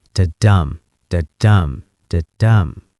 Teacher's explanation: to get that dum sound, that stressed syllable, you need a little burst of air.